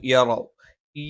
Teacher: യ നാവിന്റെ മധ്യഭാഗം മേലെ അണ്ണാക്കിലാണ്